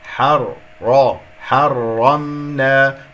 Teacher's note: تفخم الحاء لأن جاورت الراء المفخم لأنها مفتوحة